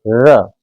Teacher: आप उच्चारण करके देखिए, र, जीवा जो हल्की सी कंपन के साथ मूर्धा को स्पर्श करेगी